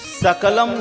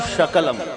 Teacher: परंतु उसी स को श कर दे, तालु से उसका उच्चारण कर दे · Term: दंती सकार